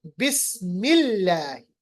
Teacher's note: اس کے برعکس اگر اس لام سے پہلے زیر ہو تو لام جلالہ یعنی اللہ میں جو لام ہے لام جلالہ وہ باریک پڑھا جاتا ہے